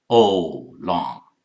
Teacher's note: Americans use O sound, starts with O and half U